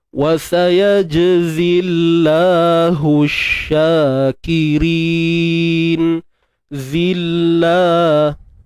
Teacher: Kalimah Allah ni kita nipiskan je. Sebab sebelum kalimah Allah baris bawah kan pada zai tu. · Huruf zai tak perlu keluarkan hujung lidah, duduk dalam je. Di belakang hujung lidah, di belakang gigi sebelah bawah.